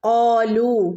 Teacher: ഖാലൂ വാവ് മദ്ദുണ്ട്, 2 ഹറക്കത്ത് നീട്ടി ഓതണം കേട്ടോ. ഖാലൂ, ഇവിടെ അലിഫിൻ്റെ മുകളിൽ സുക്കൂന് വന്നാൽ നമ്മൾ ഇവിടെ പ്രത്യേകിച്ചൊരു ശബ്ദം കൊടുക്കുന്നില്ല.